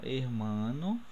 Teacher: hermano, o som forte está no mar